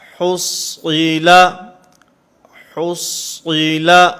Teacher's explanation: صاد کو پر پڑھیں گے، ہا کو بھی باریک پڑھیں گے، لام کو بھی باریک پڑھیں گے